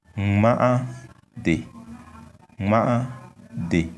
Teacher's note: we have two vowels, a, and on them we have tones, high tones.